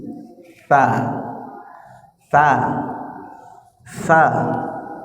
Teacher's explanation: Keluar ujung lidah disentuhkan ke ujung gigi.